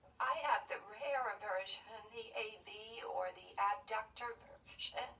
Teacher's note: My vocal cords stay open rather than open and shut, and I sound breathy quite frequently. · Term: Abductor spasmodic dysphonia